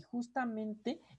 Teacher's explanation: justamente es una palabra que tiene dos sílabas tónicas. Si ustedes se fijan, justa es sílaba tónica y mente es sílaba tónica.